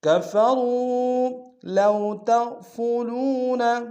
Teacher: لو میں واو لین ہے، بغیر کھینچے پڑھیں گے